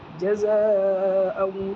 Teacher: زا کے اوپر مد ہے، چار الف کے برابر کھینچے گا، مد متصل ہے